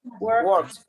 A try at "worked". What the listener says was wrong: Worked. Worked. Final T, right? T in sound. Remember when you are speaking, I know there is some fluency. It is not that we are going to be like an exaggeration of the sound, like we worked many hours. It's not like that, right?